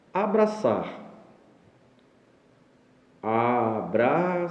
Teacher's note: Novamente a tonicidade na última sílaba, nós temos o exemplo de oxítona de novo.